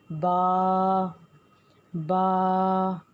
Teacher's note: با دونوں ہونٹوں کے تر حصوں کو آپس میں ملانے سے ادا ہوگا